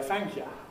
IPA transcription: ˈθæŋk jə